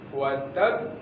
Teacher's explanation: Kalau ini watab ada tempo kira-kira seperempat detik ya, atau setengah detik. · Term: qalqalah kubro